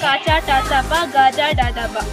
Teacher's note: ವರ್ಗೀಯ ವ್ಯಂಜನಗಳಲ್ಲಿ 3 ವಿಧ: ಅಲ್ಪಪ್ರಾಣ, ಮಹಾಪ್ರಾಣ, ಅನುನಾಸಿಕ. ಅಲ್ಪಪ್ರಾಣ ಕಡಿಮೆ ಉಸಿರಿನಿಂದ ಉಚ್ಚರಿಸುವ ಅಕ್ಷರಗಳೇ ಅಲ್ಪಪ್ರಾಣ